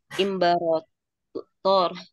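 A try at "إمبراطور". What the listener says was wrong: Ya, dia nggak dibaca ro ya. Imperator.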